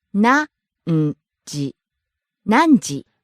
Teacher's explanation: Starts high, drops on n, stays low.